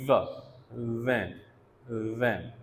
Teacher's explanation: अपर teeth और lower lip, ठीक है, ये आपस में क्लोज आते हैं। And again there is a narrow passage open between these articulators. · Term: लेबियोडेंटल